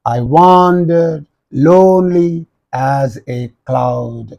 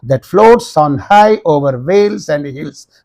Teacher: All these 8 syllables are arranged in 4 pairs or feet of unstressed and stressed syllables. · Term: iambic tetrameter